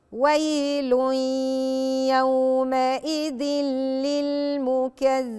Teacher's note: إدغام بدون غنة خلاص الحرفين بيدخلوا مع بعض، لكن ما بقفش، ما اضغطش عليه